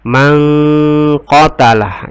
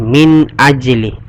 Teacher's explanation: Mangqatalah, ini hukum bacanya adalah ikhfa. Kenapa ikhfa? Karena nun sukun ketemu dengan qa. Cara membacanya dengan berdengun.